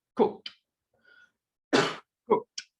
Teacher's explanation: Entonces, el ED es pronunciado como una T.